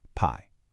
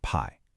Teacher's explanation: Notice how that i and the e just blend super smoothly into a single syllable.